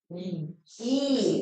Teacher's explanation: 이 발음할 때 입술 모양 어때요? 평평하죠? 평순 모음이네요